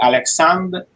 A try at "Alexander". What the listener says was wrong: and you just do the R alone. Yes, close to that. But the R need to be down. The R need to be really smallly audible.